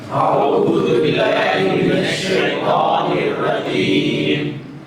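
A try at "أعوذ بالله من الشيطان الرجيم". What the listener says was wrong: عین کو ذرا دبا کے نکالیں. اعو اعو اعو اعو اعو. اس کو تھوڑا مشق کریں. اعو اعو اعو اعو. حمزے کو دبانے کی ضرورت نہیں. حمزہ تو ایسے مطلب بلانا ہے، وہ تو آ ہی جاتا.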